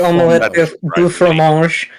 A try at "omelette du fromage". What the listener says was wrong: It's not pronounced it do either. It's oh.